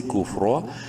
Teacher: را کو منہ بھر کے پڑھیں گے زبر کی وجہ سے